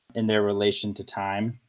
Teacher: So there's this kind of like stressed, not stressed, not stressed, stressed in their relation to time.